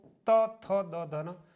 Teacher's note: तो जिह्वा दांतों को स्पर्श करती त वर्ग के उच्चारण में